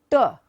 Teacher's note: So when you say T, your tongue goes to the hard palate. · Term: Hindi sound